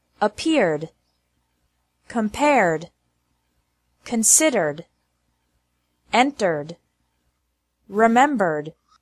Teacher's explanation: e d is pronounced like d with no extra syllable after verbs ending with an R sound